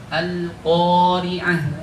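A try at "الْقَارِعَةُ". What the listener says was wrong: Ya, jangan terlalu dekat bibirnya, kali renggang. Al-Qari'ah, kofnya.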